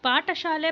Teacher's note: ಠ ಅನ್ನೋದು ಸಹ ನಾವು ಹೆಚ್ಚು ಉಸಿರಿಂದ ನಾವು ಉಚ್ಚಾರಣೆ ಮಾಡುವುದರಿಂದ ಇದು ಮಹಾಪ್ರಾಣಕ್ಕೆ ಉದಾಹರಣೆ